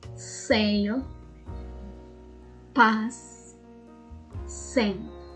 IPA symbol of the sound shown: s